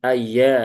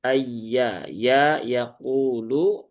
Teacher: Dia huruf ya tipis ya di tengah lidah di ay dipastikan yang berperan adalah tengah lidahnya